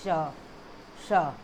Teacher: श ध्वनि का उच्चारण स्थान किससे करते हैं, तालु से करते हैं। बोल के देखिए, श क्या है, तालु से होता है।